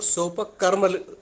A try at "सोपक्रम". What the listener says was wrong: कर्म नहीं है, आप सही पढ़िए, सही करिए, उसे सोप क्रममम है, वो क्रममम है, तो कर्म नहीं है ये, ठीक है। सोप क्रममम और फिर दूसरा निरूप क्रममम। स उपक्रम, शोपक्रम को यदि तोड़ के बोले तो स उपक्रम ऐसे बोला जाएगा, यानी उपक्रम के सहित, और निरुपक्रम मतलब उपक्रम के रहित।